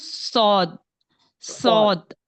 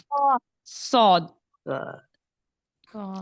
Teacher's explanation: जबान का पिछला हिस्सा थोड़ा सा ऊपर की तरफ उठेगा और और वो इस तरह से अदा हो जाएगा मोटा